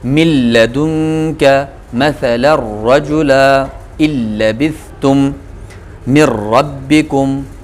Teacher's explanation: ادغام ہوگا لیکن بلا غنہ، غنہ نہیں ہوگا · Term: ادغام بلا غنہ